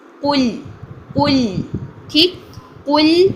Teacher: लाम भी बारीक रखें, कॉफ को मोटा करना है लेकिन लाम को कुल नहीं करना। कुल, फ़ौरन से होंठों को नीचे ले आइए अपने लाम को अदा करने के लिए।